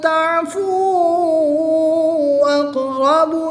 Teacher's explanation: واؤ ساکن سے پہلے حرف پر پیش ہے تو یہاں پر واؤ مدہ ہوگا۔ واؤ مدہ کے بعد حمزہ دوسرے کلمے میں ہے تو یہاں پر مد منفصل ہوگی۔ 2 سے 3 الف تک کھینچ کر پڑھیں گے